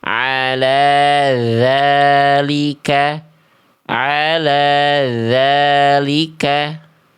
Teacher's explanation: ini makhrajnya sama cuma dia keluar angin ala tsalika harusnya ditutup jalur anginnya